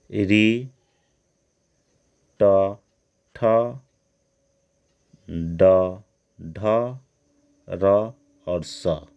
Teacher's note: मूर्धा ऋ ट, ठ, ड, ढ, र और स यह मूर्धा से बोले जाते हैं